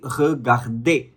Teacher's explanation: Okay, it's not going to be regarder, it is going to be regarder. Okay, so ER at the end will always be pronounced as A, regarder. Okay, but what if the R is in the middle as well? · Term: ending ER pronunciation pattern